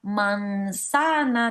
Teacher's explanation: Por ejemplo, nosotros que vivimos en América y que por tanto ceseamos, vamos a decir manzana, no vamos a decir manzana, ya que esta a en posición entre dos nasales, la vamos a pronunciar manzana, ¿no? Con el aire que sale no solamente por la boca como vocal oral, sino como vocal nasal.